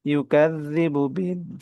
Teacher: দিন এখানে তিন আলিফ টান